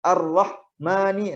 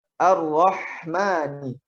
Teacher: Jadi tidak ada jeda antara huruf ha matinya dengan huruf berikutnya. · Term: rakhawah